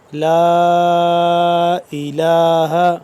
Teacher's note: لام الف مد زبر لا، لمبا کریں گے 2 سے 3 الف کے برابر اس کو، لا الہ الا هو والملائکۃ وَأُولُو الْعِلْمِ قَائِمًا بِالْقِسْطِ،